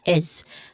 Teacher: It ends with a buzzing sound is. Now a buzzing sound is a voiced sound.